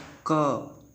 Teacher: तो क मतलब कंठ से आवाज़ आती है, तो इसका उच्चारण स्थान है वो कंठ है।